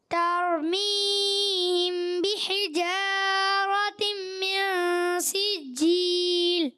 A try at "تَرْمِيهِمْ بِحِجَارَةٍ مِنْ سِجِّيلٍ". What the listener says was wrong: پھر ایک غنہ بھی آپ سے کمزور ہو گیا. ترمیہم بحجارۃ من سجیل. غلطی ہو رہی ہے، اس کو آپ نے درست کرنا ہے. ہا کی ادائیگی جہاں غنہ ہے اس کو، چلیں کوئی بات نہیں، ہوتا ہے ایسے.